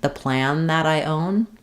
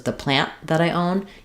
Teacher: You still need to mark that T with that unreleased T, or it's going to sound like an N sound.